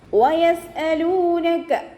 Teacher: വയസ്അലൂനക, വാവ് ഉച്ചരിക്കുന്ന സമയത്ത് ചുണ്ടുകളെ വട്ടത്തിൽ പിടിച്ചു കൊടുക്കുക. സീൻ ഖൽഖല ലെറ്ററിലാത്തത് കൊണ്ട് ഹാഫ് സുക്കൂന് കൊടുക്കാനായിട്ട് ശ്രദ്ധിക്കുക.